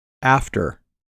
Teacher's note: pronunciation is almost the same as of the tense er but the er is a relaxed r-colored vowel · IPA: ɚ